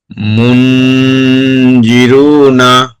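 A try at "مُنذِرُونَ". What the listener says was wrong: দালটা একটু পাতলা হলে আরেকটু সুন্দর হতো।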